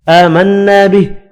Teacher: کھڑی زبر اور الف مدہ کو ایک ایک الف کی مقدار میں کھینچ کر پڑھیں گے. نون مشدد پر غنہ کرنا ہے.